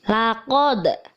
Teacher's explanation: harus mantul membacanya karena termasuk bacaan Qolqolah Sugro